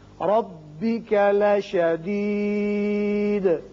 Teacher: یہ را پر پڑھیں گے اس لیے کہ اوپر فتحہ یعنی زبر ہے